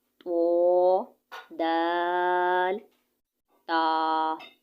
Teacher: زبان کی نوک اور جو نوک کے ساتھ اوپر والے جو ہمارے دانت ہیں نا ان کی جڑ سے ادا ہونا ہے، کیسے؟ تو، دال، تا، ٹھیک ہے۔